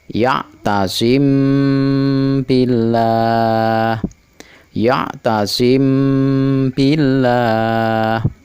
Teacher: Mim mati dibaca dengung 2 harokat. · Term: ikhfa syafawi